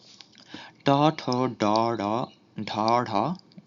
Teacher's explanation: জিহভা এবং মূর্ধার মিলিত উচ্চারণ